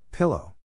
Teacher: the accent is in the first syllable corresponding to pill